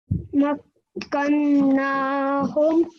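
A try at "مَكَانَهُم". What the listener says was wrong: Well done. One more time.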